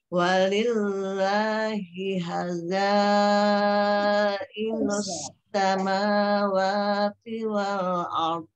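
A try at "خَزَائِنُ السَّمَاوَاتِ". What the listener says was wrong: Itu malah khonya yang belum dapat. Tadi terbaca ha. Khoy. Khozan.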